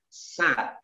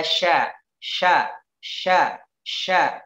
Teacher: Sa, hati-hati sa dengan sya. Sa turun ujung lidahnya, sya naik ke atas.